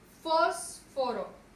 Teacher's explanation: Su mayor fuerza de voz recae en fos.